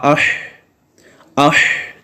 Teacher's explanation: جب آپ اش کریں گے تو سانس جاری ہوگی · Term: صفت ہمس